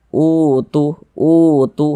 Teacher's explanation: Dipanjangkan dua harakat u-nya menjadi mad badal seperti itu.